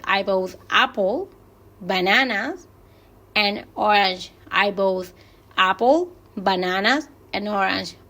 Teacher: Orange baja un poquito porque es el final. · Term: rise-fall intonation